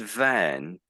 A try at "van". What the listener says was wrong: I think the V was a bit out. So do you want to say that?